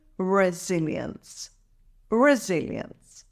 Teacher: recover financially it's pronounced as resilience here's the breakdown resil ends emphasize the second syllable zil